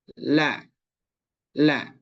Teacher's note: Huruf la ketika dia diucapkan atau dia dimatikan, maka tidak keluar nafas atau tidak keluar angin. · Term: jahar